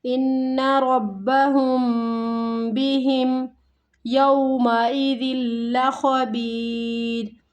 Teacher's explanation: یہ میم ساکن ہے لیکن اس کے بعد یا ہے، نہ ہی با ہے اور نہ ہی میم ہے، تو یہاں پہ ہمیں غنہ نہیں کرنا، یہاں پہ اظہار ہو رہا ہے۔